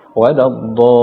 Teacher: pada kalimat waladdallin ditambahkan sedikit nabar di situ ketika dha bertemu dengan huruf lam